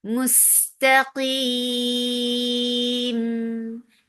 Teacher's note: Qaf is lighter than its usual form because it has kasra, and you're giving temporary sukoon on meme because of this waqf. This temporary sukoon has changed this 2 counts long vowel into 4 counts. This is what mad arid al sukoon is.